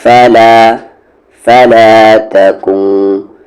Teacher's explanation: نون ساکن کے بعد آگے فا ہے اور فا ایک اخفا لیٹر ہے، آواز کو ہائیڈ کر کے پڑھیں گے